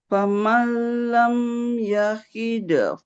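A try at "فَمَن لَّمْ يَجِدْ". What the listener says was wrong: Yajid. Dibaca yahid kalau nggak ada titiknya, Bu. Kalau ada titiknya di bawah jadi huruf jim. Yajid. Nah, bukan yahid ya. Karena ada titiknya.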